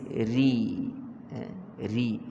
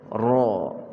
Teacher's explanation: lidah kita yang belakang, kita kena angkat sikit, dan akan ada lekukan sedikit pada tengah lidah, itu jadi tebal ra. Adapun kalau kita sebut lidah kita dalam keadaan biasa, tidak ada lekukan pada tengah itu, dia akan jadi nipis, ri.